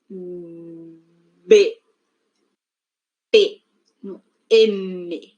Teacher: podemos señalar, pues, aquí que el labio inferior choca con el labio superior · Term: bilabiales